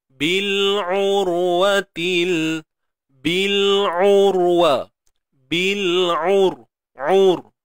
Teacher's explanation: Kena tebalkan. Ra mati sebelumnya baris depan.